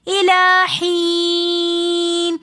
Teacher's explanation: حین کے اندر یا مدہ ہونے کی وجہ سے ہم نے حی ایک الف کی مقدار کھینچ کر پڑھا. یا مدہ کے بعد پھر آگے نون ساکن آ رہا ہے تو ہم نے وقف کی حالت میں اس کو دوبارہ تھوڑا سا زیادہ کھینچ کر پڑھنا ہے